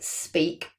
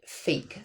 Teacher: You've got a s, which is an alveolar fricative, and then you've got the p, which is a bilabial plosive. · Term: coalescence